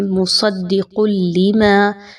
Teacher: اب یہاں پر خاص توجہ دیجیے، مصدق لما، دال مشدد ہے اور لام پر بھی تشدید ہے، تو آپ نے صاد اور دال کو مضبوطی کے ساتھ ملانا ہے، پھر قاف اور لام کو مضبوطی کے ساتھ ملانا ہے۔